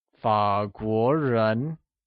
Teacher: 法国 is pronounced with a falling rising tone on A and a mid-rising tone on the O